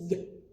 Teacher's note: we don't want to say the schwa, so it's not ya, it's just y. Nice and short.